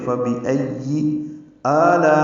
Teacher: میں آ میں مد بدل ہے، یہ 2 حرکات لمبا ہے، لا میں الف مدہ کے بعد حمزہ آنے کی وجہ سے مد متصل ہے، ہم اس کو 4 حرکات سے زیادہ لمبا کرتے ہیں